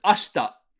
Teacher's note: You could say ashita, but you yeah, it's very, very, very infrequently pronounced. Whenever you see a she followed by a hard consonant like a ta, very frequently that e sound is gone · This E in ashita isn't pronounced too hard. So we're just going to kind of slur over it. Ashita. You could say ashita, but you yeah, it's very, very, very infrequently pronounced.